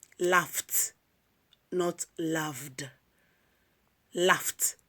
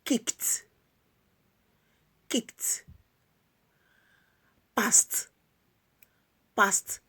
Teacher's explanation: Now, the ed ending is pronounced as t when it comes after voiceless or unvoiced sounds.